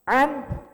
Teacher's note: Ain di tenggorokan tengah, Pak.